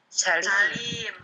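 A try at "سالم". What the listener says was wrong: Salim, bukan Salim. Iya, karena bahasa Arab itu penting panjang pendeknya. salah panjang pendek. Nah, misaknya yang panjang. Salim bukan Salim.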